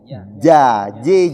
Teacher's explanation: Tidak ada desis keluar dan bukan juga dza. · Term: huruf ja